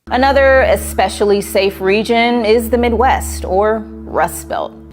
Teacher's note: we have to say region with a juice sound like in juice and jump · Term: J sound